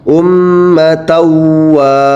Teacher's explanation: Contoh berikutnya ada tanwin juga bertemu dengan huruf waw, tertulis ummatan wahidatan, tanwinnya dimasukkan ke huruf idgham bi gunnah yakni waw menjadi ummatawa